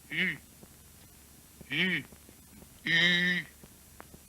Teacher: allongeant les 2 lèvres en dehors, les approchant aussi l'une de l'autre sans les joindre tout à fait